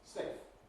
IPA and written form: seɪf (safe)